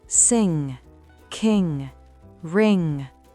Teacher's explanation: Faites attention à ne pas prononcer le G à la fin. Le son doit rester fluide et nasal. · Ce n'est pas un N suivi d'un G, mais un seul et même son nasal, N. On le produit avec le fond de la langue qui bloque l'air, un peu comme si on allait dire G, mais tout le son passe par le nez.